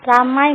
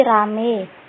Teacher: Kemudian monoftongisasi, yaitu proses perubahan diftong menjadi monoftong